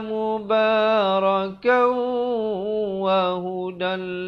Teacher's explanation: Di sini tanwin bertemu lam, idgham bila gunnah. Asalnya wahudan, tapi di sini kena baca wahudal. Terus masuk di dalam lam.